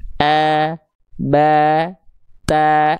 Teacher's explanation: Karena dia rileks pangkal lidahnya sehingga vokal a keluar tidak terhalangi jalurnya oleh pangkal lidah yang naik ke langit-langit. A ba ta ringan. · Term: huruf tipis